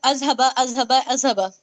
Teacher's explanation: इसे ज की तरह बिल्कुल नहीं पढ़ना है जुबान की नोक थोड़ी सी बाहर निकालना है